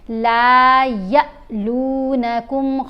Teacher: اب ہم نے یا کی آواز کو چھوٹا پڑھنا ہے, لمبا نہیں پڑھنا اور جھٹکا دے کر پڑھنا ہے. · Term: حمزہ